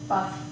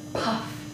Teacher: these American stops are normally much more aspirated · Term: puff of air